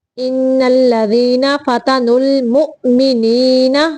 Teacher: مؤ پہ تھوڑا حمزہ کو ساکن کرتے ہوئے جھٹکا دینا ہے